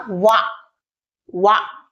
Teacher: ఈ లెటర్ ని పలికేటప్పుడు దంతు మరియు ఓస్ట్ పళ్ళు మరియు పెదాలు రెండు కూడా టచ్ కావడం జరుగుతుంది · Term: దంతోష్ట్, దంతోస్ట్